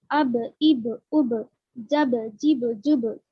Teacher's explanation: जब हम बा को जज्म के साथ अदा कर रहे तो इनका मखरज जो है 2 होंठ टक्कर खाकर अलग हो रहे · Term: खलखले की आवाज़